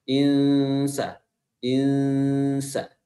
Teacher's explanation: Inna itu hukumnya adalah ikhfa. Ya, nunnya tidak dibaca jelas, namun dibaca samar-samar dan makhraj huruf kita itu lebih atau lisan kita itu telah berada di posisi huruf sin.